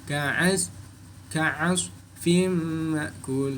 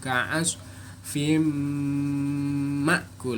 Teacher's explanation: Contoh bacaan idgham bi gunnah dalam surat Al-Fil yaitu ka'as fim ma'kul. Nah, tanwinnya fin ketemu mim maka dibaca masuk dan melebur dengan suara mendengung.